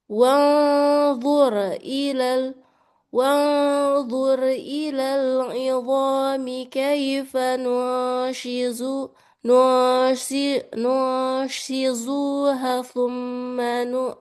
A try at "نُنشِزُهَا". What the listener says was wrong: Panjang. Hanya panjang. Shizuha. Panjang. Sebab dia satu makhraj. Ini bukan satu makhraj ya. Nun shizuha ini dia berdekatan. Enggak satu makhraj. Nun shizuha berdekatan dia. Sama-sama panjang.